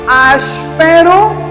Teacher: Temos inicialmente a sílaba as, que é uma tônica.